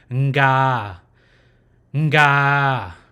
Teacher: it'll be nga with the nasal sound first, and then ga, right? It'll be the nasal sound and then the word ga with the open mouth.